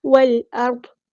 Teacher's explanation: حمزۃ الوصل ماں ڈراپ ہو جائے گا. لام یہاں پہ لام قمری ہے، اس کو ہم ظاہر کریں گے. حمزہ قطعی یہاں پہ واضح ادا ہوگا اور حمزہ قطعی باریک ول، یہ جو آ ہے نا یہ باریک ہے، وہ ہمارا لیٹر ہے تو پورا ادا ہوگا. · واو کو ہم نے لام کے ساتھ ملا دینا ہے. حمزۃ الوصل ماں ڈراپ ہو جائے گا. لام یہاں پہ لام قمری ہے، اس کو ہم ظاہر کریں گے.